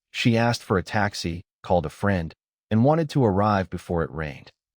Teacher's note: Asked uses t after k, called uses d after l, wanted uses id after t, and rained uses d after n.